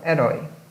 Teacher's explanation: porque ele é um ditongo aberto oral